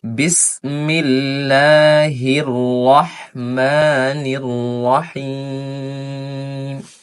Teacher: ছোট হা রয়েছে এটা হচ্ছে গলার মধ্য থেকে হবে